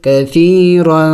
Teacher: را کو موٹا پڑھیں گے، اوپر تنوین ہے اس کے اوپر تو اخفا بھی کریں گے، یعنی ناک میں آواز چھپائیں گے، کثیرا. وقف میں ہم نے ابھی پڑھ لیا مثلا میں کہ جہاں لفظ کے آخر میں دو زبر آ جائے تو وقف کرنے کا طریقہ یہ ہے کہ اس میں سے ایک زبر کو گرایا جاتا ہے اور ایک کو پڑھا جاتا ہے.